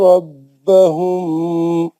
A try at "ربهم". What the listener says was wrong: نہیں غلط. ربہم کا میم میں غنہ کر دیا آپ نے. ربہم پکڑ لینا وہ میم کو.